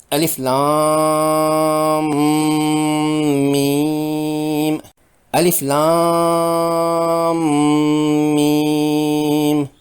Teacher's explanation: میم مشدد پر غنہ کرنا ہوتا ہے، یعنی ناک کے بانسا سے ادا کرنا ہوتا ہے۔ ہونٹ بند ہوتے ہیں، ناک کے بانسے میں جنجناہٹ محسوس ہوتی ہے۔